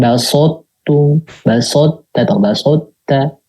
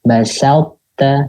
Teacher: Jadi tetap diberikan sifatnya aslinya dia tuh yang sin kan tipis, tarkik atau istifal, maka jangan ditebal-tebalkan gitu.